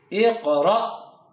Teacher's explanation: حمزہ کو دوبارہ جھٹکے کے ساتھ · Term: jerking sound